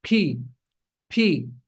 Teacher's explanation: you're sending a gush of air out of your mouth